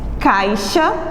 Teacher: Ao pronunciar a palavra caixa, o I, o som dele sai mais baixinho do que a letra A, que é uma vogal. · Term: semivogal